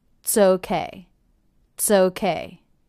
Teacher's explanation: I reduced it by dropping the vowel altogether and detaching the TS sound to the next word.